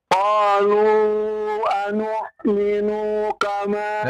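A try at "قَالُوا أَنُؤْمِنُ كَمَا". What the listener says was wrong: Qalu anu'minu kama. Nu-nya pendek ya. Jangan dipanjangkan. Kama panjang maknya.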